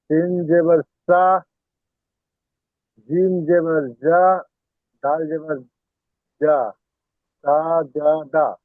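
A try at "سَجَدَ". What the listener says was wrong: জি, টান হয়ে যাচ্ছে, সাজাদা।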